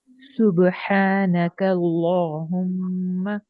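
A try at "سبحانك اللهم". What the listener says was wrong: ماشاء اللہ ٹھیک ہے الحمدللہ.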